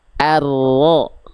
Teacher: huruf ro itu kan sifat getarannya takrir. Jadi getarannya nggak terlampau banyak, tapi juga gak boleh hilang.